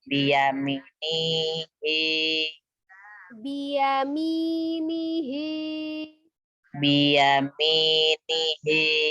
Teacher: I-nya double, ni-nya 1, hi-nya 2.